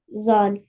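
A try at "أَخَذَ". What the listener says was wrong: Zal not. Zal zabar. Za not zal. Akhadha. Sound A.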